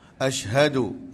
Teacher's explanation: ha asyhadu, pastikan bunyi daripada dada